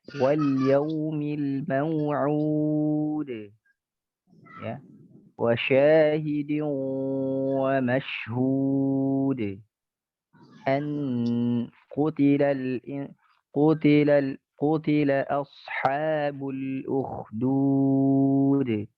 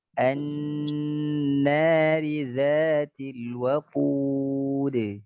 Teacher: Jadi jangan sampai ada e-nya, waqud, atau wa syahidi wa mashhud. E-nya sedikit itu sebenarnya itu masalah ya. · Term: qalqalah